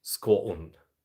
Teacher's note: there's actually a little bit of a glottal stop in there